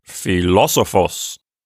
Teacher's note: it has the accent on the third syllable from the end